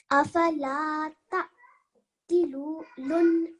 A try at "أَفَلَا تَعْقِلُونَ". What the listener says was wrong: Again, this vowel is a vowel mud, so you have to make that lam sound long. Loon. Okay, that's what when I say you need to make it long, or when you realize that this is a mud letter, and when you then you make the lam sound.